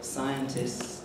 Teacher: if you speak it quickly and casually, you can easily say scientists, missing out the T. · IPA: ˈsaɪəntɪss